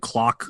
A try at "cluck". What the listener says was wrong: It's cluck, not clock.